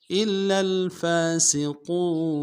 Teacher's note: الا میں حمزہ کو لام کے ساتھ ملانا ہے، لام کے اوپر تشدید زور دیں گے، اور لام کو لام کے ساتھ ملانا ہے.